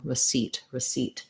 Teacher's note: this pronunciation is fairly straightforward it's just a second syllable stress